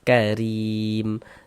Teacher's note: maka huruf ro dibaca apa? Dibaca tipis, dibaca tarkik. Tipis kan huruf ro-nya.